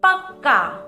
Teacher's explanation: यहाँ पर 2 क आए हैं जिसमें एक का उच्चारण करते समय कम समय लगा और एक का उच्चारण करते समय पूरा समय लगा। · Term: द्वित्व व्यंजन